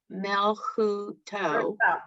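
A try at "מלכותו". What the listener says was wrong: First vowel. First vowel.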